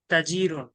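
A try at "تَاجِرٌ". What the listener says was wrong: তাজিরুন, তাতে একটু টান হবে।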